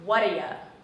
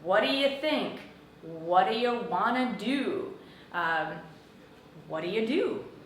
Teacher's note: These 3 words often get linked together by native English speakers and sound like, what do ya?